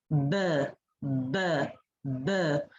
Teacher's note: When we do the sound b, b, b, the vocal folds vibrate. So this is a voiced sound